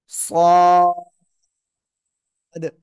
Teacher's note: জিব্বার আগা, সামনের নিচে দুই দাঁতের পেট ও আগার সাথে লাগাবেন, লাগিয়ে চার আলিফ টেনে উচ্চারণ করতে হবে।